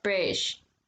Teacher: they sometimes drop the t's when they're in the middle of words especially in cockney accents